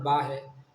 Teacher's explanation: با دونوں ہونٹوں کے آپس میں ملنے سے ادا ہوتا ہے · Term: مخرج